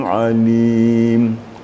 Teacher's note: ain itu di tengah-tengah tenggorokan. Dia sedikit lagi sifatnya menonjol sedikit.